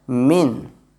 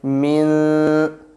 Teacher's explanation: But whenever we try to do ikhfa sound, it will become mil. The tongue will not connect to the teeth. it will remain still between the teeth and the voice goes to our nose for 2 seconds